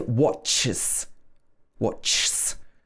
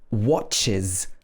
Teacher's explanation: if the word ends in like an S-like sound, like s, ch, and so on, then the end of the word is I and z, or uz